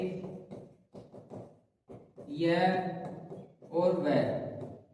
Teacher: इनका उच्चारण जो होता है बिना किसी घर्षण के होता है बिना किसी वायु के दबाव के होता है। इसलिए इनको संघर्षहीन व्यंजन भी कहते हैं और अर्ध स्वर भी इनको कहते हैं।